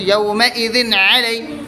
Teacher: تنوین کی آواز کو ظاہر کر کے بغیر غنہ کے جلد پڑھیں گے. جیسے یومئذ علی میم نون زیر مین اظہار حلقی ہوگا اس لیے کہ نون ساکن کے بعد اظہار کے 6 حرفوں میں سے ہا آیا ہوا ہے.